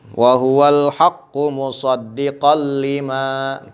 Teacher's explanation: Idgham bila gunnah, jangan digunnah ya.